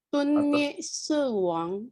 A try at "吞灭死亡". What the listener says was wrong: 死 ada 3.